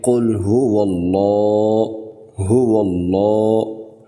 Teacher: واؤ کے اوپر زبر ہے، تو لہٰذا لفظ اللہ موٹا کر کے پڑھیں گے